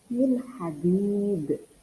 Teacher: bukan min dibaca samar, bukan juga dengung tapi jelas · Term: izhar